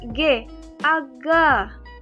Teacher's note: fonem G yaitu cara artikulasinya di plosif atau letupan. Lalu tempat artikulasinya di velar.